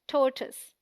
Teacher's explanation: TOR is the stressed syllable, rhyming with more. TOISE sounds like tus, a short U sound.